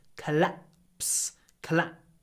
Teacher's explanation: with a little pause before the P